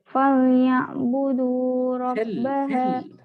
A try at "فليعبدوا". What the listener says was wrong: فاء ولام دي بالترقيق. فليعبدوا.